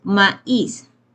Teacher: la A es una vocal abierta y la I es una vocal cerrada y que tiene acento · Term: hiato